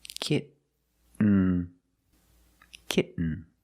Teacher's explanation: kit you don't release and you fall to an N kit when you make the stop T the tongue is up almost in the end position so you don't have to change much